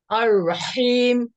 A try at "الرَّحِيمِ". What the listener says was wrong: হ্যাঁ good good.